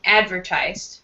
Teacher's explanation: with advertise or advertisement, the first syllable would be strong.